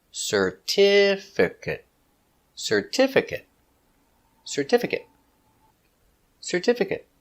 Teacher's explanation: Certificate. 4 syllables. Stress the second syllable. Certificate.